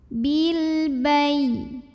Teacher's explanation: Maka cara bacanya lam sukun ini dibunyikan dengan idhar atau jelas. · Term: alif lam qamariyah